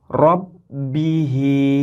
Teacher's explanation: jadi contohnya adalah robbihi bagaimana membacanya robbihi untuk yang dibaca fathahin membacanya seolah-olah huruf ro ini memenuhi rongga mulut dan ada teori lain ketika membacanya itu seolah-olah mulut sedikit mencucu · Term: tafkhim